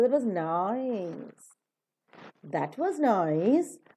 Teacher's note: only nice, which happens to be an adjective, is stressed. So that itself becomes a nucleus, and the tone that we are giving is falling rising.